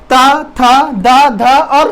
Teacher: दंत के अंतर्गत आने वाले जो वर्णों का उच्चारण करेंगे तो यहां पर जो जीभ है हमारी वो दांतों में लगेगी।